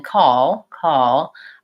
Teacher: I'm just finishing up with a very light touch of that L it does go up but it is kind of possible to